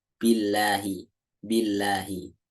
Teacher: kalau sebelumnya kasroh dibacanya lamnya tipis